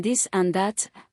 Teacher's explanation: Second, the contrast between the voiced th sound as in this and that and the d sound as in this or that substituting d for this voiced th is very common. The difference is made by placing the tip of the tongue between the teeth for th while d is made with the tongue touching the upper gum ridge.